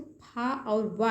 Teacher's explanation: फा और वा हैं जो दंतोष्ठ से उच्चारित होते हैं